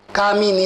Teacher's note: કામિની ઉચ્ચાર કરો છો ની ઉપર ભાર આવે છે.